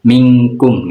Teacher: nun sukun atau tanwin bertemu huruf q dan Kaf cara membacanya nun mati atau tanwin disuarakan ng atau Eng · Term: ifna, ihfa adna